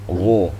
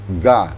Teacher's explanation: Lidah bagian dalam dan langit-langit belakang.